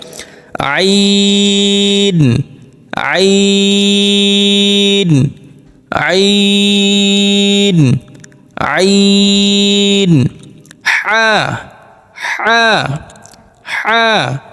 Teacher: পুরো যে গলাটা আছে কণ্ঠনালী তার মাঝখান হইতে দুইটি হরফ উচ্চারিত হয় একটি হচ্ছে আইন দ্বিতীয়টি হা অর্থাৎ এই দুইটি হরফ একটু চেপে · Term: হলকের মধ্যখান